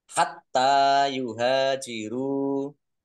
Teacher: taknya dibaca double, ada tasdidnya. Biar tampak double maka harus ditekan.